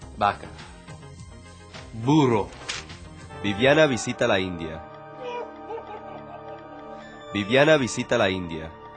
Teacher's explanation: lips are slightly open, allowing air to pass through them as he pronounces both the B's and the V's.